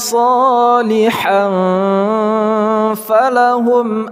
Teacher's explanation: Huruf ha berharakat tanwin bertemu dengan huruf fa ikhfa